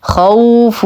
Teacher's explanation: مد طبيعي بمقدار حركتين خوف واو ساكنه ما قبلها مفتوح فهو حرف لين زمنه ما دون الطبيعي